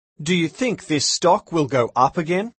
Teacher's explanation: Note that the intonation goes up at the end of these questions.